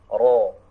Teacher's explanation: Jadi tidak pas pada ujungnya, bukan ro, tidak, tapi ro, ya. Ujung lidah sedikit mundur, hampir ke tengah lidah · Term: huruf ro